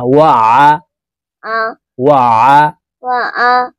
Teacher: এই আইনকে হলকের মধ্যখান থেকে চাপ দিয়ে উচ্চারণ করতে হবে, কারণ আইনের মাখরাজ হলকের মধ্যখান থেকে হবে।